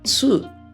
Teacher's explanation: eu não tenho tu, eu tenho tsu, ele vai acrescentar mais um som de consoante aqui. Então vai ficar muito diferente.